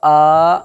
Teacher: خڑا زبر کو ایک الف کے برابر کھینچ کر کے ادا کریں گے